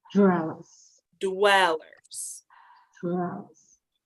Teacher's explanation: it's not really the r sound it's the W sound the WW wagon sound right so d d like dog and